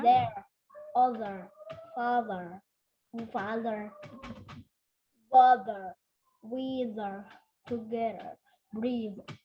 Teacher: ujung lidahnya harus keluar dulu dan harus ada getarannya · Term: voice TH